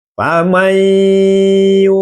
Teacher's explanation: Jadi bacaannya idgam bigunah itu adalah nun. Suara nun dimasukkan ke dalam huruf idgham bigunah. Di sini ada hurufnya adalah ya.